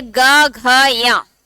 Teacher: ग और घ और या बोलते समय पाते हैं कि कंठ पे थोड़ा सा प्रेशर ज्यादा पड़ रहा है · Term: सघोष